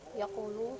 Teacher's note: Kemudian ada qolah pada ayat wal fajr bil imad yaqulu di mana huruf kaf memantul sedikit